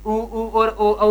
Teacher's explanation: 2 ही प्रकार के थे, वृत्ताकार और अवृत्ताकार। उच्चारण करने पर ओष्ठ का आकार गोल सा हो जाता है तो वृत्ताकार।